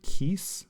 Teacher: with gemination, the first copy ends the first syllable, so kis, and the second copy begins the second syllable, se, so kiseh.